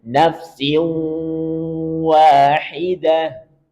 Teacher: ada dengung dalam rongga hidung kita. Nafsiu, siu, siu. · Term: gunnah